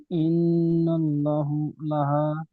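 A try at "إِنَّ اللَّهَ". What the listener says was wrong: টান হচ্ছে না। ইন্নাল ল, ওই টানটা গিয়ে ল ধরে রাখতে হবে।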